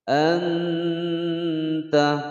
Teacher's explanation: ada nun sukun bertemu ta, hukum bacaan ikhfa ya, disamarkan disertai dengan dengungan selama 2 harokat atau 2 ketukan.